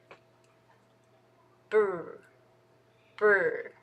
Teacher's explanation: for R though sounds kind of dark maybe that's because the tongue is tensed · before you open your lips for B your tongue is already waiting in the back